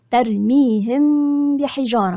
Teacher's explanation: مش هقفل شفايفي وانا بجيب الميم واخش على الباء ده اسمه الاخفاء الشفوي وقلنا ليه الشفوي لان مخرج الميم هي · هقول الميم ولكن مش هقفل المخرج · هقراها تاني، ترميهم بحجارة، مش هقفل شفايفي، مش هقفل شفايفي وأنا بجيب الميم وأخش على الباء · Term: الإخفاء الشفوي